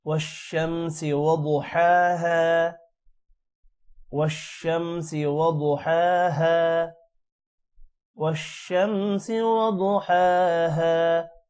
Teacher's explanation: اعوذ باللہ من الشیطان الرجیم، بسم اللہ الرحمن الرحیم، والشمس وضحاها۔ والشمس، شین پر شد ہے جس کی وجہ سے شین ایک بار واو کے ساتھ پڑھا جائے گا اور ایک بار اکیلے میں پڑھا جائے گا۔ والشمس وضحاها، وضحاها بہت موٹا ہوگا۔